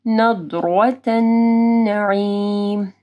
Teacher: ضاد کو موٹا پڑھنا ہے اور را کو بھی موٹا پڑھنا ہے